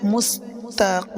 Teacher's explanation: কিম জিহ্বার গোড়ার থেকে উচ্চারণ হবে। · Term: বড় কফ